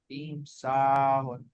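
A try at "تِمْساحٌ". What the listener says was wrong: Very nice. Timsahun. Very nice. Ahsantum.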